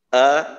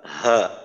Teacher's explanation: হামজা উচ্চারণের সময় একটু নিচের অংশ থেকে উচ্চারিত হয়, হা হামজার তুলনায় একটু উপরের অংশ ব্যবহার হয় হা উচ্চারণের সময়। আ হা, তো এই হামজা এর মাখরাজ আমাদের বাংলার স্বর আ এর মতোই, আর হা এর উচ্চারণের ক্ষেত্রে আমরা বাংলায় হ উচ্চারণ করি হ এর মতো।